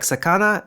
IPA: sakana